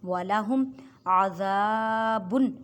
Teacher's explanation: مرض ولہم عذاب میم ساکن کے بعد عین ہے، عین یہاں پہ اظہار شفوی کا قاعدہ کریں، اظہار شفوی میں غنہ نہیں کرتے۔